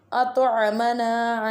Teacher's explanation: ain pronounced at the middle part of throat